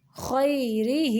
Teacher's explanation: یا کو نرمی سے پڑھیں گے کیونکہ یہ یائلین ہے، اس کے پچھلے حرف کے اوپر زبر ہے، را کو باریک پڑھیں گے۔